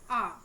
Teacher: पश्च स्वर पीछे से बोली जाती है, वो हो जाएगा आ